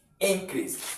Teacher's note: to be a noun you stress the first syllable which is in then the second syllable you don't stress it